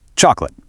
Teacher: Three clunky syllables, but native speakers completely drop that middle O. It transitions straight into a quick two-cllable word, chocolate.